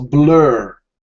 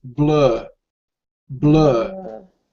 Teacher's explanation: American it's pronounced differently compared to British yeah so in American in the American Standard the r is very distinct